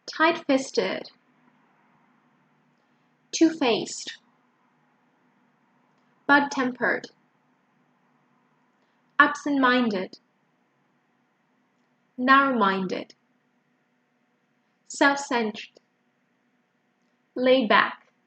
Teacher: When we have compound adjectives, it's always the second word that is stressed. The first syllable of the second word. Festive, faced, tempered, minded, centered, back.